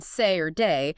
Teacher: it starts as an A and slides right into an E. E, E, E, say. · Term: diphthongs